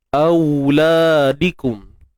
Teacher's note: Kemudian au ni kita baca dengan sifat lunak. Auladikum. Sifat lunak, sifat yang lembut.